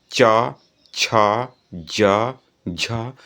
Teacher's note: जब आप बोलेंगे भी च ज झ तो जो जीभ है ना वो आपके तालु से टकराएगा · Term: च वर्ग